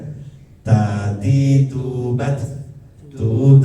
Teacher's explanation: harus perhatikan itu ada nafasnya keluar e semburan nafasnya